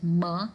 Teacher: Like for the sounds like m, when you say m sound, you see that both the lips join together and the sound is pronounced. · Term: bilabial